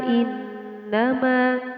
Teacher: inna adalah hukum bacaan gunnah, cara membacanya dengan ditahan 2 sampai 3 ketukan